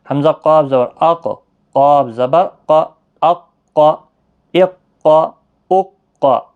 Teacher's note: یہ کاف باریک ہے اور یہ قاف حروف مستعلیہ کا ہے، موٹا ہے، تشدید اوپر ریڈ میں دی ہے، گویا کہ یہ حروف قلقلہ کا حرف بھی ہے.